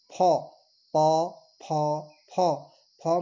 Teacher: फ में दंत और ओष्ठ, यानी कि ओष्ठ पे आपके दांत टच होते हैं, तो फ का जो उच्चारण स्थान है वो दंतोष्ट्य है।